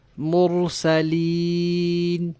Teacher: مرسلین کی یا کی ادائیگی کے وقت آواز ناک میں نہیں جانی چاہیے۔ مرسلین ایسے نہیں پڑھنا، مرسلین۔